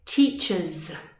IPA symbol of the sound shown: z